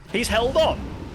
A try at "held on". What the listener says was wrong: Yeah, held on, exactly. There's no S there.